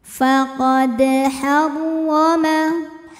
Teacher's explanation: Dan berada di tengah bacaan kita, maka dalnya dipantulkan dengan pantulan yang kecil. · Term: qalqalah sughra